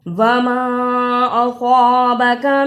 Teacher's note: زبر اور چھوٹی مد ہے، اس لیے ماں کو لمبا کرنا ہے